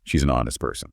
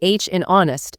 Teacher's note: the H in honest is silent. The word actually starts with a vowel sound, that O sound. And the rule for A versus an is all about the sound that comes next, not necessarily the letter itself.